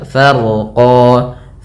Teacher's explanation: Farqa, yaitu fa, kemudian ro-nya dibaca dengan tebal karena huruf ro yang dia sukun sebelumnya fathah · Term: ro-nya tebal